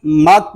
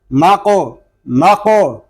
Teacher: اس کو مک نہیں پڑھیں گے یا مک اس طرح نہیں پڑھیں گے. قاف ساکن ہے، اس میں کلکلا ظاہر کریں گے اور قاف کو پر بھی پڑھیں گے